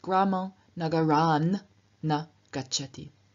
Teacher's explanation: Na begins with a nasal, and therefore the T at the end of Nagarat also turns into a nasal. T is a dental stop, and therefore it turns into the dental nasal, N, and we are left with Gramam Nagaran na gacchati.